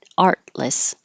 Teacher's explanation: you hold that first T so you won't hear it